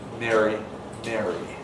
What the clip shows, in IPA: ˈmeri